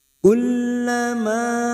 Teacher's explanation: Ma fathah diikuti Alif dua harakat kita panjangkan